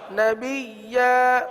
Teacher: اچھا اس میں دیکھیے یہ نبیا وہ مد عارض والی پوزیشن نہیں ہوگی، یعنی 3 الف تک کھینچ کر پڑھنا، 1 الف تک کھینچیں گے کیونکہ الف سے بدل رہے نا، 1 الف تک کھینچیں گے